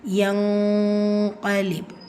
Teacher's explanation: இது என்ன இஹ்ஃபாவுடைய சட்டம். நூனை பாதியாக மறைச்சி இந்த இடத்துல குன்னா செஞ்சு ஓதுவீங்க.